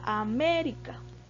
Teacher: hay excepciones todas las esdrújulas se tilda entonces la palabra américa tiene el acento en la sílaba me veamos que está en la posición antepenúltima